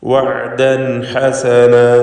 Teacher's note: തൻവീനിനെ ഇൽഹാർ ഹൽക്കി നൽകി മണിക്കാതെ വെളിവാക്കുക. വഅദൻ ഹസന ശേഷം ഹൽക്കിയായ അക്ഷരമായ ഹ വന്നതാണ് അതിനുള്ള കാരണം.